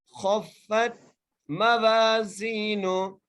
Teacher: فا کو تا سے ملا رہے ہیں، تا کے اوپر جزم آ رہی ہے